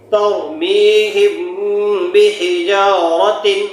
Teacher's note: میم پر جزم لگا رہا ہے اور اس کے بعد با آ جائے تو کیا کریں گے؟ گنہ کے ساتھ اخفاء کر کے پڑھیں گے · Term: اخفاء شفوی